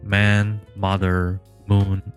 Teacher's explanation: The bilabial nasal sound can be found in the onset of English words like man, mother, moon